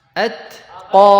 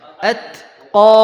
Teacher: Pada awalnya adalah sifat syiddah, yaitu tertahannya suara. Kemudian setelah itu hams, mengalirnya nafas.